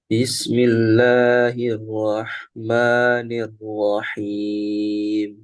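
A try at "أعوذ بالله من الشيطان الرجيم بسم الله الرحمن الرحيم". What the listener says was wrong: eh, temponya harus sama ya antara ta'awud, basmalah disamakan. Antum pilih tadwir atau hadar, sedang atau cepat. Berarti dari ta'awudnya dilambatin juga.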